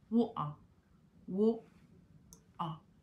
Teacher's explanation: Donc, pour y parvenir, vous devez exercer une espèce de pression au niveau de la gorge. Cette pression va bloquer l'air et vous rendrez la consonne T muette. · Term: glottal T style